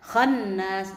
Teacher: Ibu jangan cepat-cepat di sini ya Bu ya. Khannas, baca ditahan dulu 2 harokat minimal. Khannas, bahkan lebih dari 2 harokat lebih bagus. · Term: gunnah